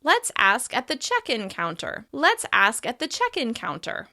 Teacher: As you can hear, in this example, we're stressing check.